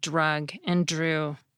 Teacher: It comes out more like a J sound in words like drug and drew.